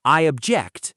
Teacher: You'll hear, I object in courtroom scenes a lot, and that's always the verb form, stress on the second syllable